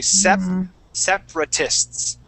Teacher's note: So that that second A, or the first A after the P, we skip right over that